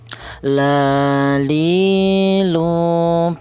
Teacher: huruf lam ini keluarnya huruf berasal dari ujung lidah menyentuh langit-langit mulut